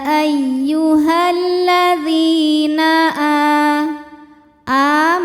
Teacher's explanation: kita panjangkan a-nya ini cukup dua harakat saja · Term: mad badal